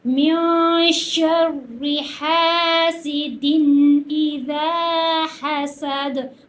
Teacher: یہ دوسرے والی ہا ہے، یہ وسط حلق سے ادا ہوتی ہے